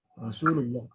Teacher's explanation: Lohnya itu yang terakhir dibaca 5 harokat karena dia masuk ke mad arid li sukun ya.